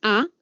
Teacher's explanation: la a si lo pronuncian van a sentir el sonido en medio de la cavidad bucal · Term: centrales